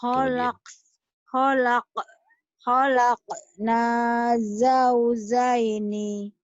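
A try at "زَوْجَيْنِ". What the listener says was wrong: Satu rapu zai. Satu jim keras. Khalaqna rapuh dulu baru keras. Satu huruf rapuh, zaitun, Zainab. Satu huruf keras, Jakarta, Jatinegara, Bajai, Jai.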